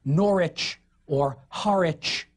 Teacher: the suffix wich, pronounced without the W now, like Norwich or Harwich.